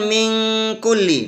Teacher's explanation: nun sukun ketemu kaf. Di sini juga ada hukum namanya ikhfa. Huruf ikhfanya kaf, harus samar.